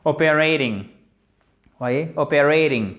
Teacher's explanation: le T ne va pas se prononcer comme un T, mais il va se prononcer quasiment comme un D. Il va presque se transformer en D. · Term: American English